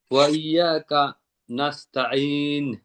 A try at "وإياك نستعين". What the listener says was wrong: কয়ে থামবেন না, একসাথেই বলেন। ওয়া ইয়াকা নাস্তাঈন। ইয়াকা কা কয়ে থামবে এক হয়ে যান, আপনি একটা আইনের মতন হয়ে যাও। ওয়া ইয়াকা কা বলবেন না, ওয়া ইয়াকা নাস্তাইন। হ্যাঁ হ্যাঁ, নাস্তাইন, এখানে আইনের মধ্যে আবার ডাবল লাগবে, আইন নাস্তাইন। ওয়া ইয়াকা নাস্তাইন।